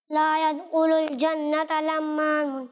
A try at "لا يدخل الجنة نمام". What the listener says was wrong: لا يدخل الجنت نمام. نون آئے گا آخر میں, نمام. نون سے نمام, لمام نہیں ہے بلکہ نمام ہے. لا يدخل الجنت نمام.